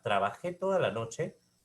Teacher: trabajé toda la noche es descendente